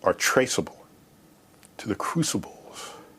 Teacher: the crucibles has such a breathy quality